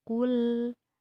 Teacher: Membaca huruf ku ini berharkat domah, mulut agak dimonyongkan, monyong, dan ketika membaca lam, mulut ditarik menjadi tersenyum. Kul, karena ini huruf tipis.